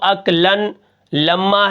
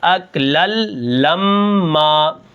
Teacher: نون ساکن نون تنوین کے بعد اگر لام آ جائے تو وہاں پر ادغام ہوتا ہے، جس کے اندر نون کی آواز غائب ہو جاتی ہے۔ اب یہاں پر دیکھیں اصل میں تو اکلن لما ہے، لیکن یہاں پر میں کیا کروں گا، اس لام کو اس لام کے ساتھ ملا دوں گا، جس کے اندر وہ نون کی آواز پیدا ہوتی ہے، جو نون تنوین ہوتی ہے وہ غائب ہو جائے گی۔